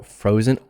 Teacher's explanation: the z of course is a voiced s